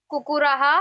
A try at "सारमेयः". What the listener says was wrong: कुकुरः। सर नहीं, सार। सारमेयः।